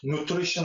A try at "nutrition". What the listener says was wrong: Nutrition. If he's stressing again on that R, right? So this is the correct pronunciation.